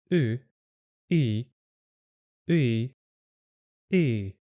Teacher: It is similar to the English sound e like in the word thin. But in Ukrainian it sounds a bit longer and is spoken at a lower pitch. To pronounce it correctly, think of the sound uh like in the word book and then add the sound e to it and you'll get u plus e e.